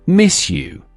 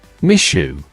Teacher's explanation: Connected, miss you. The S and J merge to form a sh sound.